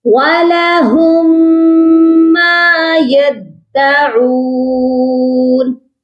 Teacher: میم مشدد کے ساتھ ملا کر پڑھا جائے گا اور غنہ بھی کیا جائے گا